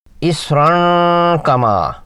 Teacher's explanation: اسراں کما میں صاد حرف مستعلیہ ہے، موٹا پڑھا جائے گا، را کی تنوین کے بعد قاف حرف اخفا ہے، اس تنوین پر اخفا کرنا ہے، نون کی آواز کا خشوم سے دو حرکات لمبا